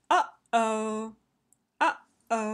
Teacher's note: the click is always clean it's always clean and clear because the click is bringing the vocal folds together before the air goes through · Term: glottal onset